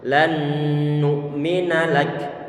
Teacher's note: kaf dia juga tipis, dia punya sifat hamas ataupun ada angin yang keluar. Tapi jangan sampai lupa bahwa huruf kaf di sini dia dalam kondisi berharokat.